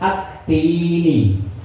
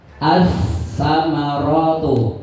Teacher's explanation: Kalau syamsiyah L-nya hilang